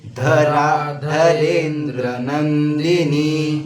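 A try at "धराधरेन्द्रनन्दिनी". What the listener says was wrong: धरा आकार दीर्घ है, धरा ऐसे नहीं बोलना, धराधरेन्द्र नंदिनी।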